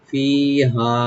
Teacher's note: ফি একালিফ টানবেন, হাটাকে রাইট দিয়ে একালিফ টানবেন